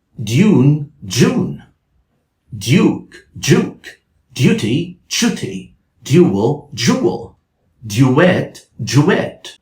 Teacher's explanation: Now, when the D sound is followed by the vowel U in British English, a Y is added between the two sounds. And again, assimilation may happen and the Y changes into J.